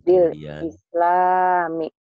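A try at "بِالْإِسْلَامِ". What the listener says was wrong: Jangan buru-buru. Bil islami.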